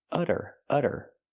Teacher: We see the double t pronounced as a fast d because it's between vowels.